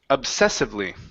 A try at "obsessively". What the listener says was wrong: Get that B sound in there. Obsessively.